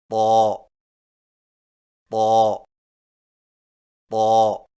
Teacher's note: طا کی ادائیگی میں زبان کی نوک کو سامنے والے اوپر کے دو دانتوں کی جڑ سے لگا کر اور زبان کے پچھلے حصے کو تالو کی طرف بلند کرتے ہوئے موٹی آواز میں پڑھیں، یعنی طا طا طا۔